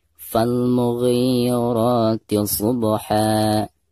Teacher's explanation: hilangkan suara tanwinnya, lalu digantikan dengan bacaan panjang 2 harokat. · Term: mad iwad